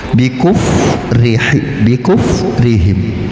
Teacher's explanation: fa itu ada khams, ada angin yang keluar